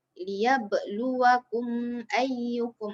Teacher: Okey, dalam konteks ayat yang ni ialah qalqalah sughra, qalqalah kecil. Qalqalah kecil maksudnya dia punya lantunan tu tak adalah besar sangat, kecil saja, rendah. Okey, terjadi apabila tadilah saya cakap sukun berada di pertengahan kalimah.